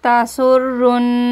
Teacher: نون مشدد کا گنہ کریں گے اور کھڑا مد کو کھینچتے ہوئے رکیں گے